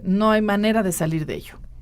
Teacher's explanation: cuando llevo la entonación hacia abajo es una afirmación